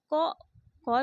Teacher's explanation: तो क जो है और त ये अघोष है और अल्प प्राण भी है।